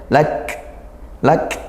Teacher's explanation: kalau kaf sukun ini dikuatkan dulu, baru dia desis nafasnya. Ya, syiddah dulu baru hams.